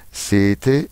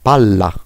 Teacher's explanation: Le doppie consonanti si pronunciano più forte. Esemple, sete sette.